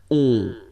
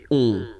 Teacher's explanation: it's a nasal and it goes in your nose and it goes like on. Alright, so you don't hear any N